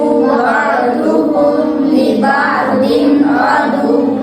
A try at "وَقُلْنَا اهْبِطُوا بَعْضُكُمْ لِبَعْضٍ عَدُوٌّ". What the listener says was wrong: वक़ुलना नहीं है वक़ुलना बितू बअदुकुम लिबअदिन अदुव्व